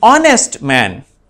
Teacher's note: here the sound of h is silent